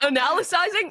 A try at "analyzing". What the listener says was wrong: you're taking analysis and putting ising on the end